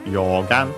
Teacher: it's a Chinese compound accented on the first syllable